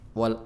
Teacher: lebih tebal walard agak agak monyong maju sedikit bibirnya